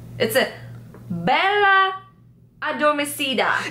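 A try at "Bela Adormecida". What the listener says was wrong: Yay!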